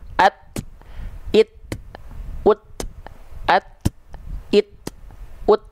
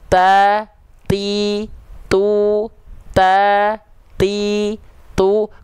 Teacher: percikan nafasnya itu lebih terasa ketika huruf ta dalam kondisi sukun. Tapi ketika dia tak berharokat, kayak gak kedengeran sifat nafasnya, sifat percikannya. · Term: huruf tak sukun